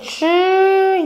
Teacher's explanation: when you say ooh you round your lips